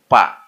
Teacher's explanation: bunyi Pa Karena diucapkan dengan dua bibir